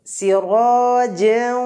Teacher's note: র এটা মোটা হবে পুরো হবে রয়ে জবর থাকলে র মোটা হয়